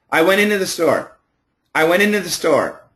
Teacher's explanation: Okay, so first of all, what you need to know is we will cancel the T. If we say it fast, we can cancel the T.